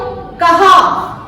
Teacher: अब जैसे कम, कहा, ये कहा वाला स्वर है, ये हमारे गले से निकल रहा है